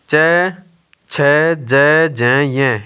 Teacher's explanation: च वर्ग आ गया, च, छ, ज, ज, य। इनका उच्चारण स्थान तालु है।